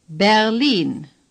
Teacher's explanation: The stress is on the long I.